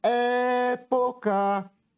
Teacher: Qual é a sílaba que eu demorei mais tempo pronunciando? Foi a sílaba é. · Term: sílaba tônica